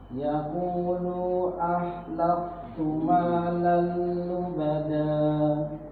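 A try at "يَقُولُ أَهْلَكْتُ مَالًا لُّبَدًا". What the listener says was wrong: Jangan memanjakan lu-nya. Yaqulu ahlak langsung. Yaqulu ahlaktu malan.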